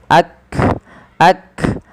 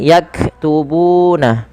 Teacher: Maka di dalam melafalkan huruf kaf yang berharokat sukun, langkahnya adalah menyesuaikan dengan makhraj dan sifatnya. Makhraj huruf kaf dari pangkal lidah kita, dan kaf memiliki salah satu sifat.